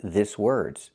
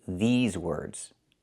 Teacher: We have to use the long E like green beans. I cannot use the short I like this is. I need the long E like green beans.